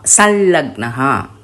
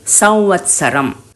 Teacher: அனுஸ்வரத்தை அப்படின்னு ஹம்மிங்கா உதடு ஒட்டாம நேசலா சொல்லணும். ய ல வ இந்த 3 லெட்டருக்கு முன்னாடி அனுஸ்வரம் சென்டென்ஸில் வந்தாலும் சரி, வேர்டில் வந்தாலும் சரி, ஈய ல உவ் அப்படின்னு உதடு ஒட்டாமல் நேசலாக சொல்லணும்.